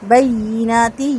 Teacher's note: یا کو اس کی آواز تھوڑی سی ریز کر کے پڑھا جائے گا، سختی کے ساتھ نہیں پڑھا جائے گا